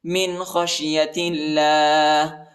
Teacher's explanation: اللہ کے نام کو باریک پڑھیں گے، نرم پڑھیں گے، موٹا نہیں پڑھیں گے